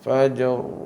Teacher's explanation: ditafkhimkan ra tu maknanya dengan kita membundarkan ataupun membulatkan kita punya er mulut tu